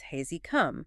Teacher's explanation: The preceding sound kind of overrides the H.